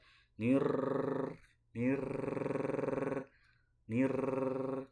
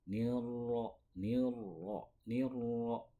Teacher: Nah, agar sifatnya itu tidak terulang secara kuat. Kalau tidak dibalikkan ke punggung lidah, nah maka itu sifatnya akan terulang dengan kuat.